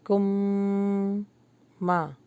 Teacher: آگے میم آ رہا ہے تو اس کو غنہ کریں گے کم ما اور الف مدہ تھوڑا لانگ ہوگا ما لم تا